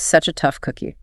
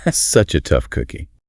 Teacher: Notice how the such and the a physically blend together into one continuous sound. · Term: connected speech